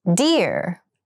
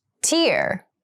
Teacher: Deer has the voiced d sound and tear has the unvoiced t sound.